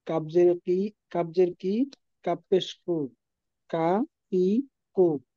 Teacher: 5 নম্বর মাখরাজ, জিহ্বার গোড়া থেকে সামনে একটু আগায় উপরে তালুর সাথে লাগায় উচ্চারিত হয়। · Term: কাফ